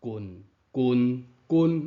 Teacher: 中声调的直管读法，目睭看正中，喙的发音向正中发出来